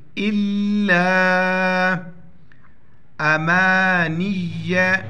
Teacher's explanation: الف کے اوپر مد ہے اس کو پانچ الف کھینچیں گے الا امانیہ نون کو یا کے ساتھ ملائیں گے نون یا